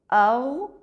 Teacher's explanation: غین کی آواز حلق کے اوپر کے حصے میں کچھ دیر جاری رہتی ہے۔